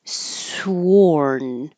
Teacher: Oath to rounded. And sworn, we do hear the W, so your lips begin rounded. Sworn. And sword, we don't say the W, it's spelled with a W, and you do round your lips, but not as much, just sword.